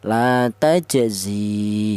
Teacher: Ya yang mati ini, maka huruf za ini dipanjangkan dua kali lipat, yaitu dua harakat. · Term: mad thobi'i, matobi'i